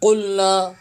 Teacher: قوف کی ادائیگی زبان کے آخری حصے جو تالو کے ساتھ جڑ کے لاتی ہے، قوف کی ادائیگی زبان کے آخری حصہ تالو کے ساتھ لگے گا۔ قلنا قوف کی آواز آئے گی، قوف اسے کاف نہیں پڑھیں گے، زبان کی جڑ کا آخر جو کوے کے پاس ہے یعنی تالو کے پاس ہے اس سے لگے گا تو قوف کی ادائیگی ہوگی۔ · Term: موٹا قوف